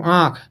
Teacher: नाक से कम सांस निकलती है, मुख से अधिक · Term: अनुनासिक